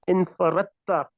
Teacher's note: you write it infaradta, but you pronounce it infaratta because of the idgham. That is because ta and dal are qareebul makhraj.